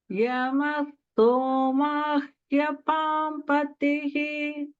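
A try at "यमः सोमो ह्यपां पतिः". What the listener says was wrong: The only thing is that somo was sounding a little bit like soma. So this is somo, somo, and then hyapam.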